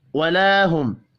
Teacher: الف مدہ ہے، 1 الف کے برابر کھینچ کر پڑھیں گے، میم ساکن کے بعد یا ہے، اظہار شفی ہوگا، غنہ نہیں ہوگا